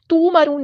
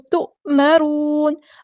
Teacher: مد آ گیا تو مد اصلی کرنی ہے، تومرون نہیں پڑھنا، حمزہ کو جھٹکے کے ساتھ ادا کرنا ہے ، تؤمرون، را ہمارا ہیوی لیٹر ہے پورا ادا کریں گے،